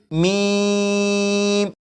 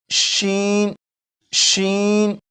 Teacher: اگر میم کو پڑھیں تو آواز منہ میں نہیں پھیلتی، جیسے میم۔ لیکن شین کو جب پڑھیں گے تو آواز منہ میں پھیلے گی، جیسے شین، شین۔